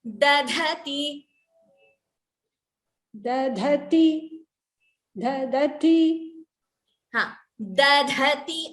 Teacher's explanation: Only the first da is alpa prana, second da is mahaprana.